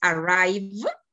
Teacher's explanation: Entonces, esas consonantes stress, vibrantes, esa ED con que se forma su pasado, disculpen, no se va a pronunciar ya como T, sino como una D